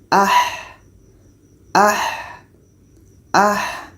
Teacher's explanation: Ha ini letaknya di tengah-tengah tenggorokan. Jadi kita baca ada suara yang kita alirkan. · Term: rakhawah